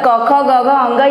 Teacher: आप उच्चारण जब करेंगे तो आपकी आवाज़ यहाँ कंठ से आती है। तो ये पूरा जो क वर्ग होता है वो कंठ से निकलती है आवाज़ उसकी।